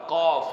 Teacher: اگر شیشے میں دیکھیں تو سامنے وہ کوا اسے کہتے ہیں علم تجوید کی زبان میں، تو وہ لٹک رہا ہے۔ جب یہ زبان کی جڑ اوپر تالو کے نرم حصے سے لگتی ہے تو یہاں سے یہ حرف قاف ادا ہوتا ہے، قاف، موٹا قاف۔